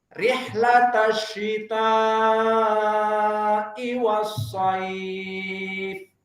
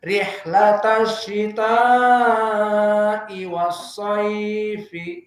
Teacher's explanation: Kalau kita wakaf berarti rihlatasyita'i wasaif. Panjang saif. Kenapa? Karena mad arid lisukun.